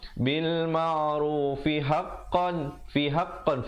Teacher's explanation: Tapi kalau pilih untuk sambung bil ma'rufi haqqan, fi haqqan, fi nak ke ha itu jangan lambat. Kerana dia 1 harakat saja.